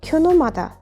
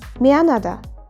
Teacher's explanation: at the beginning of a syllable there is H. So H almost is not heard or even silent.